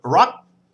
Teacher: The final consonant is the gorgai, which makes a sort of kind of unreleased K sound